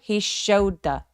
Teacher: He showed the 할 때 show더 아니죠. showed 할 때 소리와 더 할 때 소리가 굉장히 혀의 위치가 가깝습니다. 그래서 어 특히 더 같은 경우는 중요한 키워드가 아니기 때문에 힘을 빼고 he showed the 요렇게 연결해 주세요.